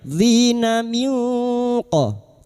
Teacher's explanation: Dzina minqa, nun sukun bertemu kaf ikfa hakiki, kita samarkan bunyi nun sukun dan mendengung selama 3 harokat